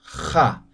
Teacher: En aymara es como la J, pero fricativa, ¿sí? Como raspando.